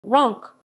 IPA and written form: ʁɔ̃k (Roncq)